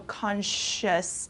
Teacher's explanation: This S-C-I-O-U-S sound kind of turns into an S-H, so consciousness, okay?